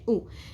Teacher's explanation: واو نہیں ادا ہوگی، صرف حمزہ کی پیش ادا ہوگی. واو کے اوپر کچھ بھی نہیں ہے، جزم نہیں ہے، کوئی حرکت نہیں ہے.